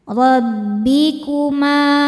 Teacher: Ra dibaca tafkhim karena berharakat fathah, maka ra nya tebal. · Ma, mad thabi'i dzahiri karena ada alif didahului fathah. Maka dibaca panjang mimnya dua harakat.